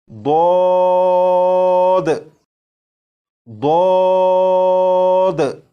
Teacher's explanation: جب آپ اس حرف کو پڑھنے سے پہلے زبان کی کروٹ کو اوپر کی داڑوں کی جڑ سے لگا لیں گے، اس کے بعد آواز کو موٹا کر کے اس حرف کو پڑھیں گے تو یہ حرف بالکل درست پڑھا جائے گا، جیسے ضاد ضاد۔